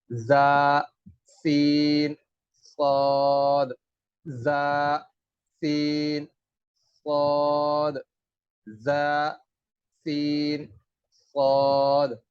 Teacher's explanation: اور سیٹی کی آواز سے یہ تینوں حروف ادا ہوں گے۔ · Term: صفیریہ